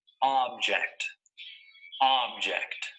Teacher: notice that the stress is on the first syllable